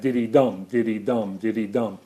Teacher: The anapest rises up to the stress, and the dactyl falls down from it. · Now, the other rhythm that the poetic feet try to approximate is the triple rhythm. It's called a triple because there are three syllables in it. Two of them are unstressed.